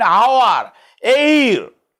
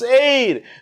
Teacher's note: H-E-I-R, but H remains silent, it becomes heir